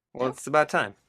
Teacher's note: a stop T because the next sound is a consonant